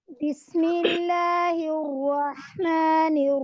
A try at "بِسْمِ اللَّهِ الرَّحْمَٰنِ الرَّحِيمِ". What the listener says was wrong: आप रा अदा करते हैं, रा अदा करते वक्त आपके होंठ साइलेंट हो, अपनी जगह पे हो, गोल नहीं होने चाहिए। जब आप गोल करेंगे तो साउंड डिफरेंट हो जाएगा।